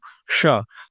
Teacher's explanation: इसमें हमारी जीभ का जो अग्र भाग होता है वो मूर्धा के पीछे वाले तालु के हिस्से को छूने का प्रयास करता है। लेकिन छूता उसे भी नहीं है।